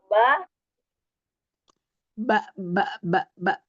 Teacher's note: Safatain ya dengan dua bibir. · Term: Huruf ba